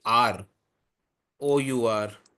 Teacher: But we when we say we say r o o ur we do not we do not uh we do not pronounce the h. The h is silent. So in this case even though the word became begins with begins with a consonant H the H is silent.